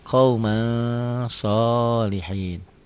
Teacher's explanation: Tulisan dan bacaan beda. Ditulisnya ada n-nya, dibacanya n-nya tambah g jadi eng. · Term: ikhfa